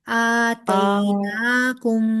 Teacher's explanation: खड़ी जबर है ना नून पे, दो हरकत बराबर लंबा करेंगे